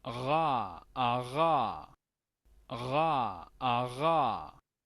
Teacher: a este se le conoce como sonido fricativo uvular. Ese es el nombre que le dan los lingüistas a este sonido, que es el que nos interesa aprender.